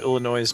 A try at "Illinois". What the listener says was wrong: Looks at you pronouncing the S on Illinois.